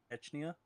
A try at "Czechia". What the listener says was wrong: Nope, there's no N. Nope, CZECHIA, Czechia.